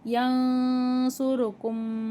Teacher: யன்சுருக்கும்ல நூனே சாக்கினுக்கு அப்புறம் சாது இருக்குது, இங்கே இஹ்ஃபாவுடைய சட்டம் வருதுனால நம்ம குன்னா செஞ்சு ஓதணும். ரா மேலே பேஷ் இருக்குது, ராவை வல்லினமாக ஓதணும்.